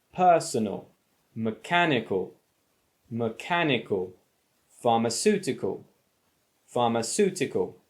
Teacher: same as rule six that we just had a look at you put the main stress on the anti-penultimate syllable